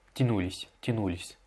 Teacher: Il ne faut pas allonger le ou, il faut juste l'accentuer.